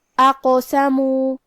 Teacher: قاف کو ہم زبان کے جڑ اور تالوں کے نرم حصے سے ادا کریں گے، اور کیونکہ اس پہ جزم ہے لہذا ہمیں قاف کو قلقلہ سے پڑھنا ہے. قلقلہ کا معنی ہے حرف ساکن کو ہلانا، تو ہم یہ حرف کو ہلاتے ہوئے یہ کلمہ کو پڑھیں گے.